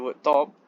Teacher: you release a burst of air after the articulation of t. This is also an example of aspiration.